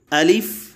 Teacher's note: الف کی ادائیگی میں آخر میں فا میں سانس جاری رکھنا، الف لام کو معروف پڑھنا، جیسے الف۔